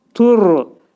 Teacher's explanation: Burada ra hərfi qalın oxunacaq. Təxfim oxunacaq. Ra hərfinin məxrəci dilin ucu üst işin altındakı ətə dəyir.